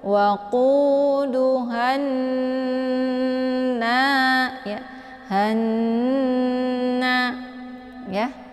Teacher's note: Karena di sini posisinya adalah nun yang bertasydid ya, maka ini dinamakan dengan gunnah musyaddadah. Jadi cara bacanya didengungkan ya. Maka hanya ditekan kemudian ditahan suaranya 2 harokat sambil meleburkan suaranya ke dalam huruf nun.